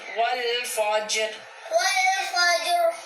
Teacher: جیم حروف کلکلہ میں سے ہے، جیم پہ کلکلہ کریں گے